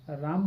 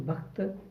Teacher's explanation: शब्द के अंत में या शब्दांत का जो अ कम से कम मूल व्यंजन के बाद आने पर लुप्त हो गया। यानी शब्दांत में अ आता था, लेकिन जब मूल व्यंजन लिखा जाने लगा तब उसके बाद का अ समाप्त हो गया।